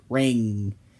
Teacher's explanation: The final sound of this group is that N you make in the back when you say words like ring. Your tongue curls back until it makes contact with your throat, like if you say a k or a g. and then release.